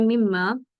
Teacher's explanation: नून एक तरीके से डिलीट हो चुका है। हमने नून नहीं पढ़ना, हमने डायरेक्ट मीम पढ़ना है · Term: इदगाम गुन्ना